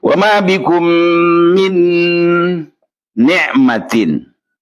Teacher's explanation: min langsung menggunakan alat ucapnya nun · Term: idgham tam bi gunnah